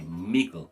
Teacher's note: The DD would be pronounced with a G. Instead of middle, we'd say miggle.